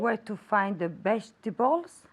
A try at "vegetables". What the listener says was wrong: Okay, veg with v, vegetables, vegetables. Well, very good, but pronounce the V more.